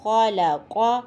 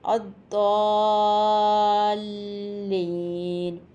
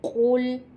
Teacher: ان تمام حروف کو پڑھتے وقت آواز میں تفخیم یعنی کہ موٹاپا پیدا کیا جاتا ہے